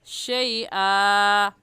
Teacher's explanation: ज़बर की तनवीन में वक़फ़ करते वक्त एक ज़बर पढ़ा जाता है तो वक़फ़ ऐसे होगा शैआ।